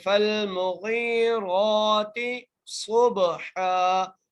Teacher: صاد کو موٹا کرنا ہے، صاد کو موٹا کرتے ہوئے با سے ملانا ہے ، با پر قلقلہ کرنا ہے، با حرف قلقلہ میں سے